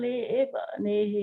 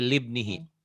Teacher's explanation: Itu ada alifnya tapi alifnya diwasal